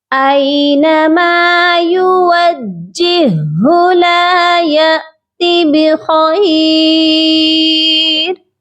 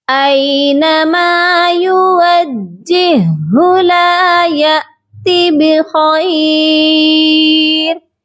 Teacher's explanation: تو حمزہ یہاں ساکن ہوا اور حمزہ ساکن کو جھٹکا دے کر پڑھا جاتا ہے